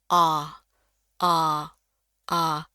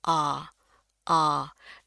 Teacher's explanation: mulut kita kebuka lebar, bentuknya kayak bulat gitulah ya, kebuka, antara mau ngucapin A dengan O, ya. Jadi, bunyinya tuh tebal. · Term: A tebal